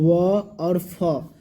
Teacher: दांत से भी बोलते हैं और ओठ से भी बोलते हैं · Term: दंतोष्ठ्य